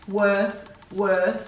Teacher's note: You know in worth and worse that there's no H after the W in either of these words, because when you say the words worth, worse, there's no air after the W, which tells us there's no H.